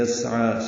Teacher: عین پر کھڑا زبر ہونے کی وجہ سے دو حرکات لمبا کریں گے. عین وسط حلق سے ادا ہوگا، یا نہیں پڑھیں گے. · سین ساکن ہے، باریک پڑا جائے گا، ہمس ہوگا. عین پر کھڑا زبر ہونے کی وجہ سے دو حرکات لمبا کریں گے.